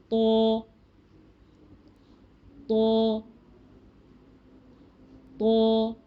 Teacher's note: तो में हम ज़ुबान को पीछे से भी ऊपर उठा लेंगे, इसी वजह से लेटर मोटा हो जाएगा, हैवी हो जाएगा, ठीक है। तो ज़ुबान को वहीं लगाइए जहाँ ता और दाल के लिए लगाया था। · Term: हैवी लेटर